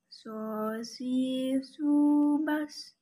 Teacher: Yang membedakan adalah caranya menebal saat melafalkan huruf shod. Berikut contoh shod melafalkan huruf shod posisi lisan terangkat.